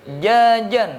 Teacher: Karena memang kita tahu makhrajnya jim itu ada di wastul lisan. Wastul jim syin ya.